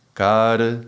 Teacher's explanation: that's the elongation of the sound with the r acting as a semi vowel